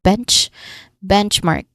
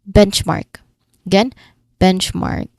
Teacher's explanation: Pronunciation wise, first syllable is the stressed part, benchmark.